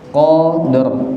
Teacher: Karena dia sukun sebelumnya fathah qadar, roknya tebal.